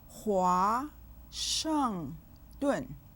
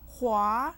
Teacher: 华 has a 2nd tone. It has a compound final.